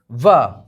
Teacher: अब ये जो हमारा वा है, वाह हमारा क्या मिलते हैं वाह बोलते हैं, वाह मतलब बोलते हैं दंत से वायु जो है स्पर्श करके जा रही है, और दंत प्लस ओष्ठ से वायु स्पर्श करके जा रही है